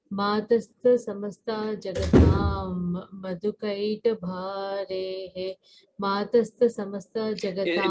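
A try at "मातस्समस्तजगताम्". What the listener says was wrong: No, it's Matas Samasta. It is not Matasta. It is Matas. Matas Samasta Jagatam. Matas Samasta. See that first sir, it's 2 sirs, no? So first sir, Matas. Matas Samasta.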